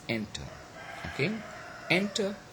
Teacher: enter okay enter so it has got two syllables and enter the first one is stress of course the second one is not stress because it has got schwa